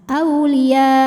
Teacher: mad wajib muttasil karena Mad thi'i bertemu Hamzah dalam satu kata Mad thobi'inya Alif didahului harakat fathah kemudian hamzahnya yang a maka baca panjangnya boleh empat boleh lima harakat Auliya namun jika berhenti ini boleh juga disebut dengan Mad Arid